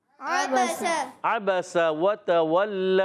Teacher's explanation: عین ادا ہوتا ہے حلق کے درمیان والے حصے سے، با ادا ہوتا ہے ہونٹوں کے تر حصے سے